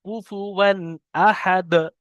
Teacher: তানমিনের আওয়াজকে বিনা গণনায় জাহির করে তাড়াতাড়ি পড়তে হবে। কুফুয়ান আহাদ, দাল সাকিন করতে হবে।